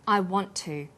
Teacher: The final t sound in want is held slightly longer on the tongue. Then to is pronounced. The t sound is pronounced only once. I want to. This type of linking is called consonant plus same consonant linking.